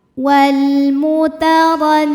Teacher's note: Huruf ro dibunyikan secara tafkhim karena berbaris fathah maka dibacanya tebal.